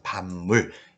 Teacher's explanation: 반물도 미음 앞에 비읍이 와 있죠. 미음 앞에 비읍이 와 있으면 이 비읍은 뭘로 바뀌어요? 미음으로 바뀌죠. 그래서 반물 이렇게 되는 것입니다. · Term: 비음화